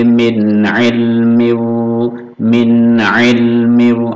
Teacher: Min jelas nun sukun bertemu Ain izhar izhar halq